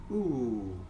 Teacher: you can feel that your tongue is high up, okay? And it's at the back of your mouth, okay? If we drop our chin, our jaw is opened, our mouth will produce a different sound. · Say, for example, if we produce this ooh sound, ooh, you can feel that your tongue is high up, okay? And it's at the back of your mouth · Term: close